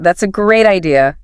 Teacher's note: Stressing great adds emphasis. It's musicality. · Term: stressing certain words